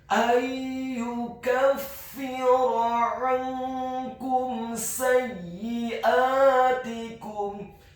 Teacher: Huruf nun yang sukun bertemu dengan huruf ya yang dhammah, hukum bacaannya adalah idgham bil gunnah, memasukkan dengan dengung